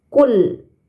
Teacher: lam sukun ini bukan huruf Qalqalah maka dibacanya tidak boleh memantul bukan kul nah tapi KL ditahan ya teman-teman KL kemudian terdapat